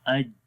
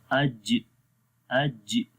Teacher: تو یہ دیکھیں اج جب پڑھیں گے تو یہ ٹچ ہو جائے گا آپس میں, زبان کا درمیان والا حصہ تالو کے درمیان والے حصے کے ساتھ جو ہے وہ مل جاتا ہے, جس سے جو ہے سختی پیدا ہو جاتی ہے آواز کے اندر. اج اصل میں جو ہم پڑھتے ہیں نا, تو وہ اس میں ہم کلکلا کرتے ہیں. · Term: شدت